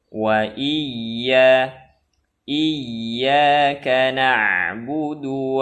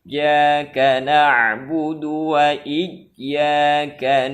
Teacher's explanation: huruf ya ataupun tasdid pada ya ini seperti Huruf Jim artinya jangan terlalu ditekan ketika membaca tasdid ya jaga sifat rakhawah yang ada pada ya